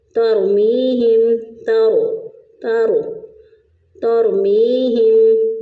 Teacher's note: موٹا پڑھتے ہیں، تو ہم نے را کو پر پڑھا کیونکہ را ساکن سے پہلے والے حرف پر زبر ہے تا کے اوپر، تو ہم اس کو پر کر کے موٹا کر کے پڑھیں گے